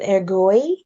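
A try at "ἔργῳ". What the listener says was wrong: Ergo. the iota subscript, you don't want to make the iota subscript an iota. you're correct that the subscript is there and you're going to write it in there in your answers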